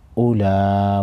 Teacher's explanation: साकिन पढ़ेंगे। हमजा पेश ओ लाम मद कड़ा ज़बर ला उला बड़ी मद को 5 अलिफ के मिकदार खींचेंगे।